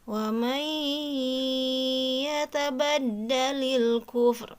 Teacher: Nah, berarti ini adalah hukumnya idgham bigunnah ya. Nun mati bertemu ya, nunnya dihilangkan ya, bunyi nunnya dihilangkan langsung masuk ke huruf ya.